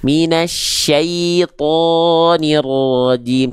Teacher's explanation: kalau dia Huruf tebal ketika fathah vokal terdengar vokal O dia enggak senyum